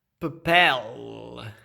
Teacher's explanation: Aqui em Portugal se diz papel, com esse L velarizado. É quase um W, quase, mas ele ainda preserva essa lateralidade, esse L. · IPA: pape[l̴]